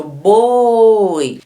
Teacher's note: Viu como você demorou nesse O aqui? Se você demorou aqui, é porque esta vogal é a mais forte.